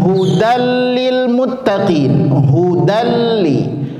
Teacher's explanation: tanwin ketemu huruf lam. Jadi dia tidak ada dengung. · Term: idgham bila gunnah